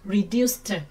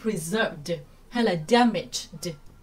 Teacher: Vì reduce âm tiết cuối là s, đúng không? Thì khi thêm ed mình sẽ đọc là t, reduced. Còn lại chúng ta đọc là d.